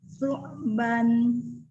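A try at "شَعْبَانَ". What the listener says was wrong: Kurang panjang. Kalau untuk mewakaf kurang panjang. Coba ban gitu. Bukan n-nya yang panjang, ba-nya yang panjang.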